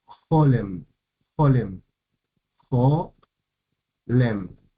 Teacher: la primer sílaba está acentuada y abierta por la o Jo Jo tiene vocal larga la segunda sílaba es cerrada y · la segunda sílaba es cerrada y no acentuada